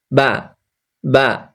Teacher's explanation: বা হচ্ছে দুই ঠোঁট মিলিয়ে ছেড়ে দিবেন